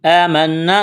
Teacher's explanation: نون مشدد ہے، غنہ کریں گے، آواز ناک میں چھپائیں گے